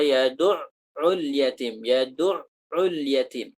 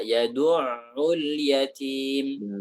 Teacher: Nah, seorang qari itu, orang yang baca Al-Quran itu, jangan sampai menahan suara ain itu secara sempurna apabila ain itu ditasdidkan